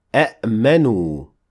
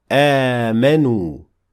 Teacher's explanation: the word A'manu, which you don't see in the Quran at all in this way, will turn into Amanu, because the first Hamza has Fatha, and so the second Hamza will turn into an Alif.